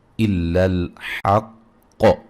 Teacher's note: قاف کو موٹا ادا کریں گے، اور جب وقف کریں گے تو قاف پہ قلقلہ کو خوب واضح کریں گے